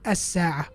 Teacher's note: we jump the lam and we go straight to the sin.